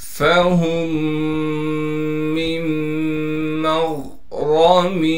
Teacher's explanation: اب دونوں میموں کا آپس میں ادغام ہوگا، یعنی دونوں میموں کو ایک میم کر کے پڑھیں گے